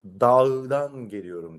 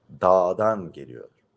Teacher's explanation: Kendinden önce gelen ünlü uzatıyoruz · hece sonunda ya da kelime sonundaysa yumuşak G'den önce gelen ünlü uzatılıyor.